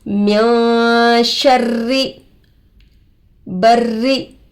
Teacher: रोए मुशद्ददा के नीचे जेर आकर है, रो को बारीक करके पढ़ेंगे